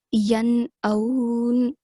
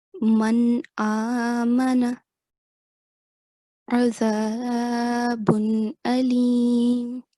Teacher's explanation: the sound of noon should be pronounced clearly without any elongation or nasal sound